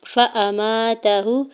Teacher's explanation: فا کے زبر کو حمزہ کے زبر کو بغیر کھینچے ہوئے ادا کریں گے